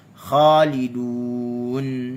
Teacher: Kha, tak ada lekuk dekat tengah lidah. Okey, dia hanya isti'la, terangkat pangkal lidah. Tengah lidah dia tidak ada lekukan pada tengah lidah.